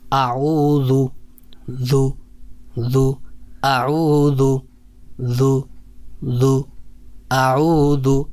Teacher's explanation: تو اعوذ میں جو حرف ہے وہ ہے ذال ہے، تو یہ نرم حرف ہے، اور جو زا ہے یہ سخت حرف ہے، تو ذال کی ادائیگی کے لیے یہ ذرا تھوڑا سا اہتمام کر لیا جائے کہ زبان کا جو سامنے والا کنارہ ہے اوپر کے دانتوں کے کنارے کے ساتھ نرمی سے لگائیں گے تو یہ ذال ادا ہوگا